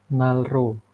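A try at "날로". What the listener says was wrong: Iya Nalo ya bukan nalro tapi Nalo seperti itu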